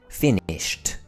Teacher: If the base word ends in an unvoiced consonant such as finish, we use the t sound.